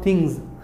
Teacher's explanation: After G we have S. Here the pronunciation is Z in the ending for S sound.